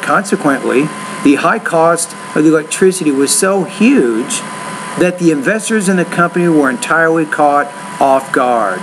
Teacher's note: so notice how I put a lot of emphasis on the word huge that's an important word in that sentence so I'm going to put a little bit more stress there